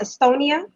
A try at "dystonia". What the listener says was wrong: No, it's called dystonia with a D. Yeah, with a D. Dystonia.